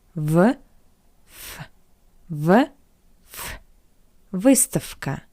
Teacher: The voiced consonant V stands before the voiceless consonant K. That's why we pronounce V as its voiceless analog F.